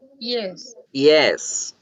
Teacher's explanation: la palabra yes ya nunca la vamos a decir con ye con yuca